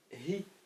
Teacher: En français, il disent ich ou ichem alors que c'est hi. D'accord ? C'est le H aspiré.